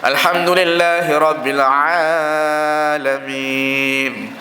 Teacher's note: kalau kita panjangkan huruf ain tu memang bunyi dia panjang, patut dua harakat.